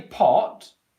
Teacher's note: When the T sound comes at the end of a word, you don't explode out afterwards. Okay, so if I say pot, I go into the T position, ot, the airflow stops, the pressure builds up a little bit, but then I do not explode out like I do at the beginning of a word.